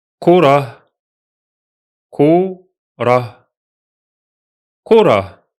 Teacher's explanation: don't stretch the H sound because it's on sukun. Just touch it lightly.